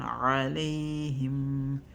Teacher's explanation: We have a mim sukun again. We hold it for 1 second.